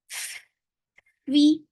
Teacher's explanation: when you are pronouncing fa, you're giving hums first, and then kasra will be very short. This sound will go on, but as you will touch kasra, your sound should be short.